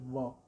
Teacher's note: व दंतोष्ठ है, दांत और ओठ से होता है